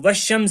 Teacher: ہم نے نہ الف کو پڑھا نہ لام کو پڑھا بلکہ ان دونوں کو ہم نے چھوڑ دیا، بلکہ شین کو ہم نے واو سے ملا دیا تو والشمس سے پڑھا۔ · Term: حروف شمسی